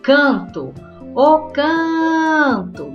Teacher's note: can se intensificou. É a penúltima sílaba, então, paroxítona.